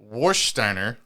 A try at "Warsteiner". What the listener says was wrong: Varsteiner. Varsteiner. Yeah, but it's not an English beer. It's pronounced Varsteiner.